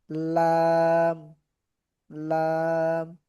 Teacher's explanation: জিহ্বার আগার কিনারা সামনের উপরের দাঁতের মাড়ির সঙ্গে লাগাইয়া উচ্চারিত হয় লাম। জিহ্বার আগার কিনারা, এই জিহ্বার আগা যে আছে আগার কিনারা, হ্যাঁ, সামনের উপরের দাঁতের মাড়ির সঙ্গে লাগাইয়া, উপরের দাঁতগুলো যে আছে দাঁতের মাড়ির সঙ্গে লাগায় লাম, লাম।